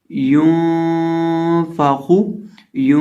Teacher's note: आखिर पे जो खौ है, इसको हमने मोटा करके पढ़ना है क्योंकि ये हरूफ मुस्तालिया में से है।